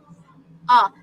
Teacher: for the short vowel sound ah our mouth is round the tongue is placed at the back of the heart palette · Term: short vowel a